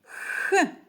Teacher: під час вимови звука х повітря зустрічає перешкоду язик та піднебіння Тому цей звук приголосний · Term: звук х